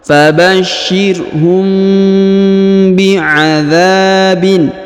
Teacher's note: Fabashirhum, mim bertemu ba, maka kita tahan dan tekan kurang lebih 2 harokat